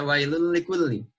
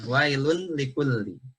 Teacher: Jadi dibaca langsung masuk, bukan wailun likulli. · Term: hukum idgham